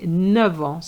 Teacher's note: the F is going to change into a V sound